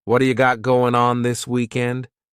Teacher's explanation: That T at the end of the word what is going to change to a D sound. This is really typical of American English, where a T that's surrounded by vowel sounds is going to change to a D. It's called a flapped T, and it just rolls off your tongue in a smooth way.